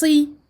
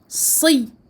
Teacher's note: Et j'emphatise le sad. Le sad est une lettre emphatique grave.